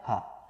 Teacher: ये जो हा है शुद्ध काकल्य ध्वनि है, ये जो हा है ये कंठ वाली ध्वनि है शुद्ध, ठीक है, ये आपकी हा कंठ वाली ध्वनि है।